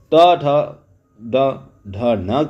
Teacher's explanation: ट, ठ, ड, ढ, न का जो उच्चारण स्थान मूर्धन्य है और इनका उच्चारण मूर्धा से होता है